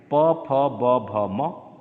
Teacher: दोनों ओठ आपस में स्पर्श हो रहे हैं, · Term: ओष्ठ वर्ण